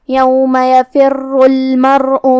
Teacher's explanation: جو کہ را پہ تشدید ہے تو 2 حرف کے برابر ہمیں حرف را کو پڑھنا ہے، اور جو کہ تشدید پیش کا ہے تو ہم را کو بھاری آواز میں پڑھیں گے کیونکہ یہاں را کا حکم ہے تفخیم